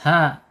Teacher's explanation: ha ada di makhraj, ada di tenggorokan paling bawah ya